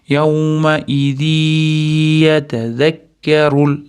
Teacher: Mana idg'om, ya'ni g'un, g'unnali idg'om. Tanvin y ga o'tgan uchun kirgizamiz ham ushlab turamiz. To'rt deguncha.